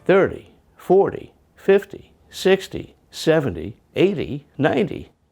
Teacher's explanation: So Americans generally say this flap t in tens numbers.